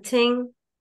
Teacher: th as unvoiced as in thing